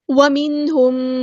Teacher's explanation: نون ساکن کے بعد کو ہم نے ظاہر کرنا ہے کیونکہ یہاں پہ اظہار ہو رہا ہے. نون ساکن کے بعد حروف ہلکی میں سے ہا آیا ہے.